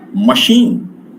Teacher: In machine, CH is pronounced as sh, not ch and k here.